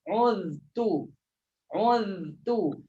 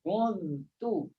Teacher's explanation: Letak lidah di zal dulu. Uz. Selesai lidah di pada zal, baru letak pada ta. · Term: izhar